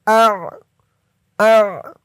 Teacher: হামজা আইন জবর আ, আইনের উচ্চারণটা গলার ভিতর থেকে শক্ত হয়ে বের হবে।